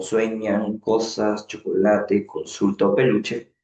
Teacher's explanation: estas palabras, su fuerza de voz, recae en la penúltima sílaba. Por eso que justamente son llamadas graves o paroxítonas.